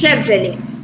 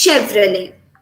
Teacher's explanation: the t sound is silent that's all and the e sound must be stressed